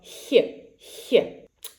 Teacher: the middle of the tongue should be raised towards the hard palate. So, here not the back of the tongue, but middle of the tongue and towards the hard palate. So, more forward in the mouth. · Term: soft kh